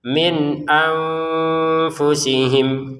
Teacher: Nun sukun bertemu hamzah baca dengan jelas, nun sukun bertemu fa baca dengan samar. Ini jelas, ini samar.